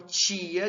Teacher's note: diante de I, por exemplo, nós teremos essa palatalização, essa alofonia